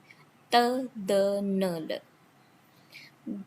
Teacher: F. Then dental. Tongue tip touches the back of upper teeth. The, n.